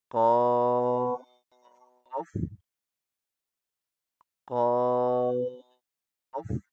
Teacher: قاف منہ کی چھت کے پچھلے حصے سے پڑھا جاتا ہے جو گلے کی طرف ہے۔ آپ کو ایسے لگے گا جیسے وہاں کوئی قوت ہٹ کر رہی ہے۔